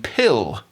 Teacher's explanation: So you get l with the tongue in a neutral position apart from making the l sound at the beginning, but all with the tongue raised towards the velum when it's at the end of the word, like in pill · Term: dark L